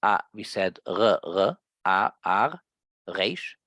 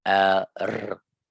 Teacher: In London, we said r, r, resh, and in Canada, in this Hasidic community, we pronounced it the Hungarian way, where you have the hard resh.